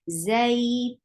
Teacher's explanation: When you are pronouncing tanween, you are giving sifa of the wasat because you know this is actually noon sakin. So whenever you are pronouncing noon sakin, it will get sifa of the wasat.